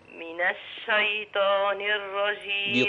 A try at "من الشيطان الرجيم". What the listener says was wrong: بطاء مش تاء. من الشيطان، طاء.